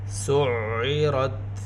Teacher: را کو پر پڑھیں گے، را کے اوپر زبر ساتھ تا ساکن